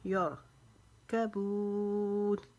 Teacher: را کو موٹا پڑھیں گے کیونکہ را ساکن ہے، اس کے پیچھے یار ہے تو را موٹی پڑھی جائے گی، یار کبون۔